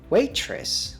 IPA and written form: ˈweɪtrəs (Waitress)